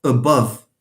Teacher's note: it's a central vowel it's like the word cut